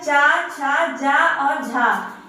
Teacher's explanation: अब इसमें दूसरा जो हमारा है वह है स्पर्श संघर्षी व्यंजन, यानी इसका मतलब है कि जिन वर्णों का उच्चारण पहले स्पर्श एवं उसके बाद में पुनः घर्षण के साथ होता है उन्हें हम बोलते हैं स्पर्श संघर्षी व्यंजन